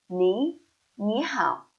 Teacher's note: when two third tones together, the first third tone should change into second tone